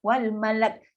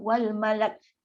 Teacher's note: Bunyi sebab sifat yang ada pada kaf tu sendiri, sifat hams.